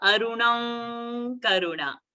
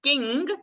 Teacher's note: So, Aruna's Anuswara will become Ng.